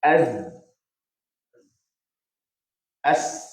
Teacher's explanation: hujung lidah dan hujung gigi atas bahagian hadapan